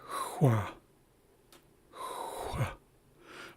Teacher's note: for the rounded X, it sounds like hua, hua, because it's almost like you're whistling, but you're not making any noise. You're doing the same thing with your lips and you're blowing air out, kind of like that.